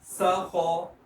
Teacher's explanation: دوبارہ خا کو موٹا اور سین کو باریک